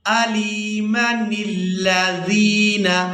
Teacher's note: اگر ہم آیت کے مکمل ہونے پر وقف نہیں کرتے تو پھر ہم نے میم کو بغیر کھینچے ادا کرنا ہے، نون کو ہم لام مشدد کے ساتھ ملا کر ادا کریں گے، عَلِيمًا الَّذِينَ۔ · لیکن اگر ہم آیت کے مکمل ہونے پر وقف نہیں کرتے تو پھر ہم نے میم کو بغیر کھینچے ادا کرنا ہے، نون کو ہم لام مشدد کے ساتھ ملا کر ادا کریں گے